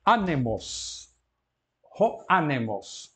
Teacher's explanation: Anemos, esta é paroxítona, não é? Tem o acento na penúltima sílaba, o acento agudo.